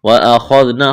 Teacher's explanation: خا کو موٹا کرنا ہے، ذال کو نرم کرنا ہے۔ واو ساکن سے پہلے پیش ہے، واو مدہ ہے، ایک الف کے برابر کھینچنا ہے۔